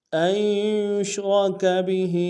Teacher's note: یا کو شین کے ساتھ ملائیں گے، را کو موٹا ادا کریں گے، کاف کو باریک ادا کریں گے اور بہی میں با کو نون سے ادا کریں گے، ہا کے نیچے کھڑی زیر ایک انتظار میں کھینچیں گے۔